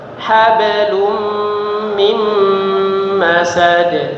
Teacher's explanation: huruf ba sukun di tengah-tengah kalimat ya. Pantulannya kecil, jangan hablum, bukan hablum tapi hablum, ya, tipis, kecil saja.